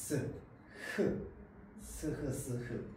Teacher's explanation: 입의 공기가 나오는이 통로가 막히지 않고 계속 뚫려 있습니다 그런데 공기가 나오는 통 로를 좁혀 가지고 마차를 내면서 소리를냅니다 스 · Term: 마찰음